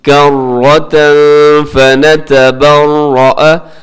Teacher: یعنی تنوین کے بعد فا ہے، اخفا کیجیے گا